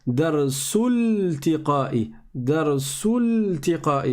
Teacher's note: On serait passé du sin directement au lem.